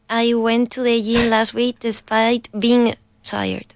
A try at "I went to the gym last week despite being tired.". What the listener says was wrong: Now put more G in gym. Gym.